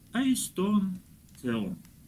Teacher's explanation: у слова нет ударения, оно произносится вместе со следующим. Эйстон теон.